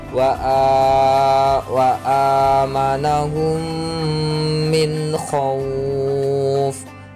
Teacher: Cara bacanya sama dengan berdengung, tidak boleh idhar, harus berdengung. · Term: idgham mimi